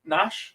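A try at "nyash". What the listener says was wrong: The N is silent. It's Yash.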